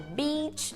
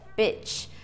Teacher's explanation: aquele erro clássico de confundir um I longo com um I curto na pronúncia.